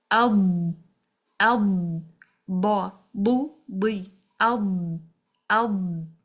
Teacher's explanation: So now from the back to the front, the makhraj is lengthened because the tongue is moving forward from the back to the front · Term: istitalah